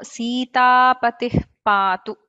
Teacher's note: there is an expulsion of air and closure of lips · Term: upadhmaniya